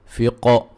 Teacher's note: قاف کو موٹا، قاف پہ قلقلہ، ٹھیک ہے جی، قاف پہ قلقلہ کریں گے.